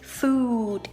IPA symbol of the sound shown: U: